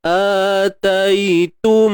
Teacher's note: Kita sempurnakan bunyi dengung tu betul-betul sampai pangkal hidung ni. Kalau tak sempurna, ataitum, bunyi dia tergantung.